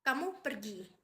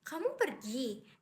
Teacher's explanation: Dengan intonasi turun menunjukkan pernyataan. Sedangkan kamu pergi dengan intonasi naik menunjukkan pertanyaan.